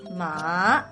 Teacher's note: the third tone, which technically goes down and then hooks up again